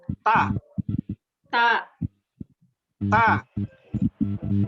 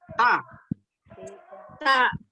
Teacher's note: ujung lidah bertemu dengan pangkal gigi seri atas